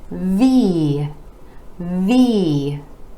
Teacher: the top teeth are connecting with the bottom lip move our vocal cords are engaging for the voiced v v